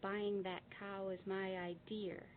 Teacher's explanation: it is pronounced where it shouldn't be this is called the intrusive R